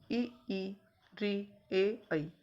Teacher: तो अग्रस्वर में आते हैं ई, री, ए, ऐ। ये 5 स्वर अग्रस्वर में आते हैं, क्योंकि इनको बोलने में हमारी जो जिह्वा है वो आगे छूती है।